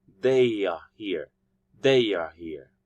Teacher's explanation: between they and are there's this sound intruded y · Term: intrusion